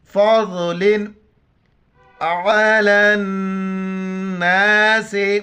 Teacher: फ़ज़लिन अलन नास, आइन के लिए आइन को गले से करेंगे, लाम को नून के साथ मिलाएंगे और गुन्ना करेंगे। लाम नून ज़बर लन, नून अलिफ ज़बर ना, सीन ज़ेर से, अलन नास, लाम के ऊपर कड़ा ज़बर है, एक अलिफ की मिदार खींचना है, छोटी काफ है, बारीक करके नून के साथ मिलाएंगे और नून पर गुन्ना करेंगे।